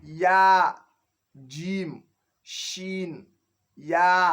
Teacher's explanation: mẹ́tẹ̀ẹ̀ta tí ń jáde ní àárín ahọ́n lélẹ́yìí